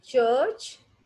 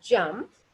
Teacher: The only difference is that ch is voiceless and j is voiced.